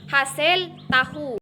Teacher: huruf H merupakan kontoid frikatif, paringal dan tidak bersuara